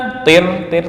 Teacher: tir itu tipis. Kenapa? Karena ini ada ro sukun sebelumnya berupa harakat kasrah.